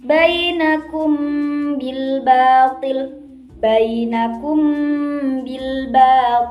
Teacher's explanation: cara membacanya harus samar-samar terus samar-samar di bibir dan didengungkan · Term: Ikhfa Syafawi